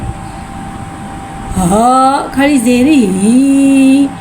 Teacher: हा को एक अलिफ यानी 2 हरकत के बराबर खींच के पढ़ेंगे। इधर हा को भारी अदा करके पढ़ेंगे। हा के नीचे खड़ी ज़ेर को नीचे गिराते हुए अदा करके पढ़ेंगे।